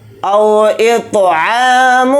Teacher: طوا کے اوپر جزم ہے تو طوا میں قلقلہ کر کے پڑھیں گے۔ عین کے اوپر کھڑا زبر ہے، عین کو تھوڑا کھینچ کر پڑھیں گے۔ · عین کے اوپر کھڑا زبر ہے، عین کو تھوڑا کھینچ کر پڑھیں گے۔ میم کے اوپر تنوین ہے، تنوین کے بعد فا آ رہا ہے تو اس میں اخفا کا قاعدہ ہو رہا ہے۔ فا کے ساتھ یا مدہ ہے، فا زیر فی کو تھوڑا کھینچ کر پڑھیں گے، یا واو زبر یو کو جلدی پڑھیں گے۔